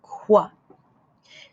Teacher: i could feel the back of my tongue tap the roof of my mouth then quickly my lips rounded and air came out